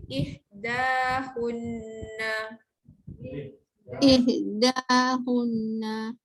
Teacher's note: Hun tolong dengungkan sebab baris pendek jumpa nun sabdu. Ihdahunna. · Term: wajib hunnah